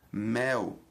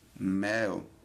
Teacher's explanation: encontramos entre as vogais acentuadas dois sons correspondentes, um E mais fechado e um E mais aberto